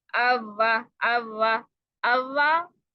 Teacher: वाओ के letter के लिए कौन सी जगह यूज करनी है जी, अपने दोनों होंठों को गोल करना है। अच्छा, एक और गलती कर देते हैं हम वाव के लिए ना, जब हमें पता होता है ना होंठों को गोल करना है, शुरू शुरू से आदत तो होती नहीं है, तो फिर जब हम आदत बनाने लगते हैं तो हम एक्स्ट्रा ही गोल कर देते हैं, अव्वा, अव्वा।